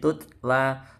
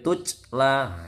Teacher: hati-hati baca taknya jangan sampai kelihatan c-nya. Boleh ngeses sedikit tutla tapi nggak boleh tucla. Hati-hati, bukan c ini tapi tak.